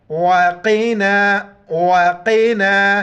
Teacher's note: काफ मोटे अल्फाज में से मोटा करके पढ़ेंगे